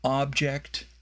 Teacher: the stress in object is on the first syllable